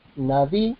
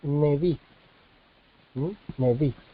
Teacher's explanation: hace la reducción vocálica de Kametz a Sheva, entonces Neví.